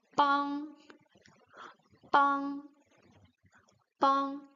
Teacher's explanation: It's a nasal sound. It blocks, it stops on the nose.